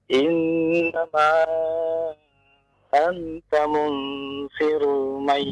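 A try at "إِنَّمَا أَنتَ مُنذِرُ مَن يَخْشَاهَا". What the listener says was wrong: Zal, kembali zal lagi. Munziru, bukan munsiru, bukan munziru, zi.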